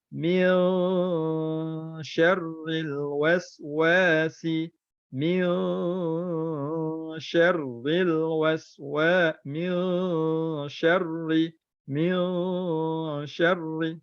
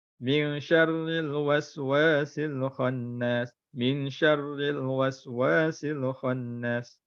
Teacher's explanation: Ikhfa hakiki ni kena dengung. Nun mati bertemu dengan shin kena dengung.